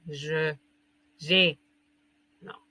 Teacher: Cuando va sola, se pronuncia, no se pronuncia E, je. No se pronuncia E, no se pronuncia O. Es como una E-O